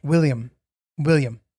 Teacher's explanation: you're blending the last two syllables and making them fast